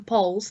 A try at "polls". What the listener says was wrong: It's like it's pronounced like flagpole, isn't it? Poles, Poll. I know it should be like Paul. It looks like it should be Paul, but it's pole.